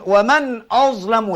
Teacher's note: mesti bunyi tebal kerana dia bersifat dengan sifat istial dan itbaq